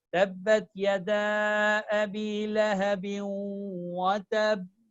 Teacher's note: You stress on the last letter that has a shadda in order to show there are two identical letters there.